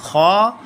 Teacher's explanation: If we talk about the makhrij of kha, the place we produce the sound of kha is our middle throat